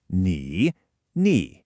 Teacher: it has to have a dip. Ni, ni. You should feel your voice go down and then come back up.